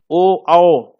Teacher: कंठ, जीभ और ओंठ, गला, जीभ और ओंठ, कंठोष्ठ्य, ये है श्रेणी इसकी।